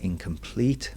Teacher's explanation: We have anopestic which is three beats which is light light heavy